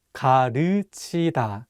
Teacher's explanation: this vowel 으 is much wider than the vowel 우